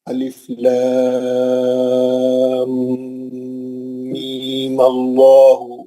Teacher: میم کا جو دوسرا مد ہے 6 حرکت والا وہ کینسل ہو جائے گا. صرف مد اصلی رہ جائے گا.